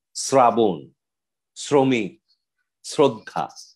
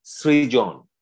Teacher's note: এরকম আমরা দেখছি স এর আরেকটি উচ্চারণ আসে, সেটি হচ্ছে এস উচ্চারণ, এস এর মতো।